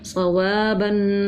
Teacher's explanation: صاد زبر صو، واو الف زبر وا، صوا، با دو زبر بن، صوابن آگے وقف صوابا، زبر تھا نرمی سے پڑھا، الف مدہ تھا ایک الف کے برابر کھینچ کے پڑھا، تنوین کو غنہ کر کے پڑھا